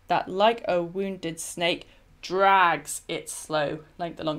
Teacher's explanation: The rhythm breaks from the expected iambic rhythm into a mixture of stresses, I think. So the iambic emphasis on snake, followed immediately by the trochaic emphasis on drags, makes the pause between them stronger · So the caesura of the pause is kind of emphasized further because you have these two emphasized syllables sort of right next to each other, which is breaking with the expected iambic rhythm. So you don't expect the drags to be emphasized because the beginning of the line has got you used to iambic rhythm.